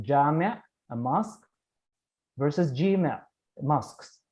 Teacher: long a, aleph, in the middle of the word is pronounced as e in the middle of the word in the Jewish dialect of Baghdad